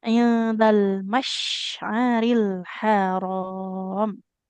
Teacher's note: huruf shinnya jangan jadi sin